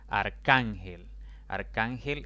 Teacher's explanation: arcángel es una palabra de tres sílabas la mayor intensidad recae en la penúltima sílaba